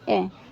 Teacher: जीभ का मध्य भाग जैसे अ। आप अ बोल के देखोगे तो हमारी जीभ का आगे वाला भाग काम नहीं करेगा। बीच वाला करेगा। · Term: मध्य स्वर